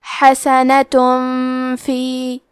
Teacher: فا حروف الاخفاء میں سے ہے. اخفاء کا معنی ہے چھپا دینا تو ہم تنوین کو چھپاتے ہوئے اور غنہ کے ساتھ یہ حکم کو ادا کریں گے